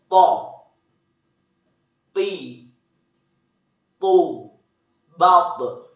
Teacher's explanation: huruf po tidak mengalir nafas dan huruf po diucapkan dengan suara menebal. Jangan lupa, ketika kita melafalkan huruf po dalam keadaan mati, suaranya terdengar mantul.